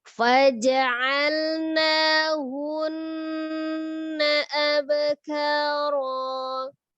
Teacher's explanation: Bak sukunnya kolkolah, tapi dia sugro saja, kecil saja ya ketika posisinya di wasol atau di tengah ya disambung.